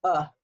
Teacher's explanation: your mouth is perfectly relaxed and we just basically grunt